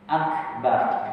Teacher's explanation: Kaf ketika mati adalah berdesis.